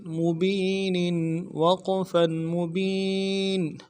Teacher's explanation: جب وقف کریں گے تو ساکن کریں گے نون کو